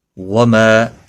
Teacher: ما الف مدہ ہے، ایک الف کے برابر کھینچ کر پڑھیں گے